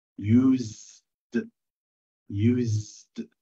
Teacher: السنة تنطقت أكنها زد.